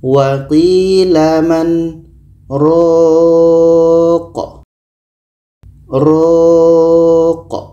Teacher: Kita panjangkan ro-nya dulu, baru matikan huruf qa.